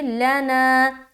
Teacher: لام کو جل پڑھیں گے، زبر ہے، نون کو ہم کھینچیں گے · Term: الف مدہ